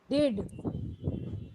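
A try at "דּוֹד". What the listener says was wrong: Not did. It is holum. Dode. Dode. Dode. Dode.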